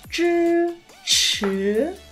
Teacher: có âm tr tr cong lưỡi không bật hơi